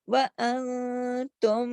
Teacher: غنہ ہوگا, آواز ناک میں چھپے گی